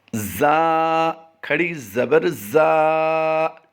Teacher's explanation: زا، کھڑی زبر زا، یعنی ہمیں انہیں اس کو سختی کے ساتھ ادا کیا ہے، اوپر اور نیچے کے دانتوں کو دونوں کو ملا کر ادا کیا ہے